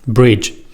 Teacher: in english there was another shift a palatalization which turned the ge sound into j